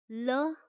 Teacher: जब हम इसका उच्चारण करते हैं तो जो वायु है वो जिह्वा के दोनों ओर से निकल जाती है, पार्श्व से निकल जाती है, बगल में से, इसलिए इसे पार्श्विक व्यंजन भी कहते हैं।